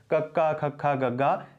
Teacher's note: ਕੱਕਾ, ਖੱਖਾ, ਗੱਗਾ, ਇਸ ਤਰੀਕੇ ਦੇ ਨਾਲ ਜਿਹੜੀਆਂ ਇਹ ਧੁਨੀਆਂ ਹਨ ਇਹਨਾਂ ਦਾ ਉਚਾਰਨ ਕੰਠ ਹੀ ਹੁੰਦਾ ਹੈ